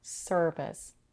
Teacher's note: It's a stressed R-colored mid-central vowel sound. It's a vowel that it's almost taken over by the American R. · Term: stir sound